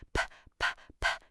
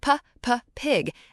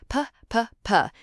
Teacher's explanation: It is a very bouncy sound. Listen for that little puff at the beginning. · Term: popping p sound